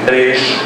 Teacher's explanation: no Rio de Janeiro é uma marca essa palatalização do S